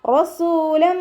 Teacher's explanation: റ ഫത്തഹ ആയതുകൊണ്ട് നമ്മൾ ഉയർത്തിയിട്ട് ഉച്ചരിക്കുക